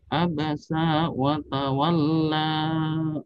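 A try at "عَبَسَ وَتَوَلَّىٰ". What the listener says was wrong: Baik, sinnya pendek. Abasa wa tawalla. Langsung.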